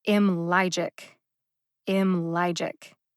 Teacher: i would say that the syllable lie in m logic has a staccato quality staccato is a music term it just means you punch it · The second syllable, ly, gets the emphasis.